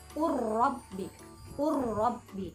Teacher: Nah, idgham mutajanisain adalah hurufnya berbeda tetapi huruf yang pertama sukun, dan cara membacanya sama-sama diidghamkan atau dimasukkan ke huruf setelahnya huruf yang sukun. Jadi tidak ada memantul ataupun perpisahan di situ. Jadi seolah-olah hurufnya itu ditasydidkan. Jadi cara membacanya diidghamkan dan ditekan. · Jadi cara membacanya langsung masuk kepada huruf ro.